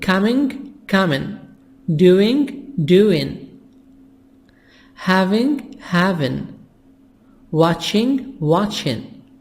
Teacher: When I have ing in speaking, in conversation, we make it without G. We make the G silent.